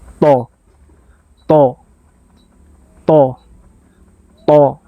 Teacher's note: Agak ke masuk sedikit. Lidah kita itu di atas gigi seri, bukan tepat di belakang gigi seri, tapi agak di langit-langit, tapi yang sudah dekat dengan gigi seri kita di atas ya. · Huruf th ini dia sedikit menebal